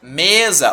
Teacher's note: Não é o za, é o me. Ou seja, não é a última, é a penúltima. Paroxítona.